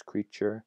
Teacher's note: The z to zh, as seen in usual, becomes usual with a zh there. The t plus a y, as in creature, becomes a ch